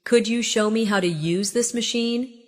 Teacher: Could you becomes could ya. in casual rhythm.